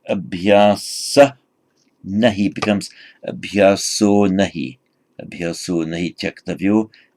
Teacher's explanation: And the abhyasa, sorry, screen's going funny, abhyasa, in the stem form abhyasa, it's a masculine noun, so abhyasa in the nominative singular, but by sandhi this final becomes o if followed by a voiced consonant.